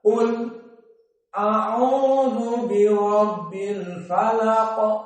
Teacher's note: As-saqt berhenti sebentar di lam, baru setelah itu masuk kepada hamzah.